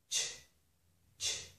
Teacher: my lips are rounded the whole time because they need to be rounded for sh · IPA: /tʃ/